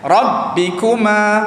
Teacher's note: Ka tu kena bunyikan angin sikit dan tekankan kuat sedikit. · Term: huruf kaf